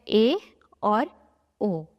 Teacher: अर्ध संवृत, इसमें हमारा मुंह जो है वो आधा बंद होगा, जिसमें है ए और ओ। इसमें हमें ज्यादा मुंह खोलने की आवश्यकता नहीं पड़ रही है, इसलिए इन स्वरों को जो है अर्ध संवृत की कैटेगरी में रखा गया है।